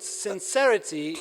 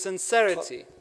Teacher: replace the S sibilance with the other s sound in Arabic